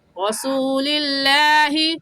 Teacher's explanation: لفظ اللہ سے پہلے زیر آ گیا تو لفظ اللہ کو باریک کریں گے، اور باریک کرنے کا طریقہ کہ آپ کے دونوں ہونٹ پھیل جائیں